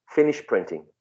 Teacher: go from sh to P straight away